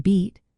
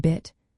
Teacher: Tense vowels, like the I and beat, are longer and requiring more muscle effort, whereas lax vowels, like the small cap high and bit, are shorter and less tense.